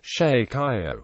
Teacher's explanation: This merged phoneme is generally pronounced as a post-alveolar fricative, either voiced in the central and western parts of the dialect region or voiceless in and around Buenos Aires. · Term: yerismo